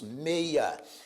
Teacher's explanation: na palavra meia ocorre um ditongo, mei, e um hiato, o do i com a